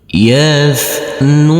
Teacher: huruf t yang bersukun ini tidak boleh kita pantulkan